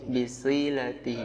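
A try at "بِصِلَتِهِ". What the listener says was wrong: Si-nya tuh antum agak ada kebidahan di situ. Bisilatihi.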